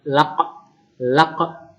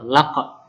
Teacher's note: karena ini qalqalah kubro, maka pantulannya itu besar. Laq jelas, pantulannya itu jelas atau besar.